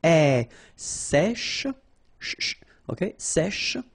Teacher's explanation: accent grave here. So it's really open.